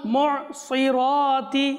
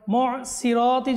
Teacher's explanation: মুসিরাতি যদি আমরা বলি তাহলে সেখানে সদের জায়গায় সিন চলে আসবে। মুসিরাতি না মুসি সদ।